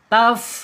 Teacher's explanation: ujung gigi seri atasnya menyentuh perut bibir bagian bawah sehingga nanti akan muncul sifat hamesnya